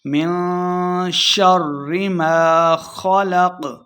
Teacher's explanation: من پہ اخفا یعنی غنہ کریں گے